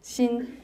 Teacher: Tone 1. It's a high level, 心. And then 性, tone 4, it's a high falling.